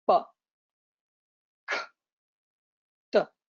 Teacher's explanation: They do not have a schwa on the end.